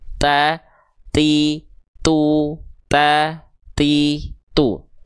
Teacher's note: Nah, jadi ketika kita melafalkan huruf ta di sini ya nanti ketika masuk bunyi vokal antara a, i atau u ketika keluar bunyi vokalnya keluar juga percikan nafasnya